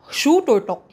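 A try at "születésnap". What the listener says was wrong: Ooh, that's good. Yeah, good try.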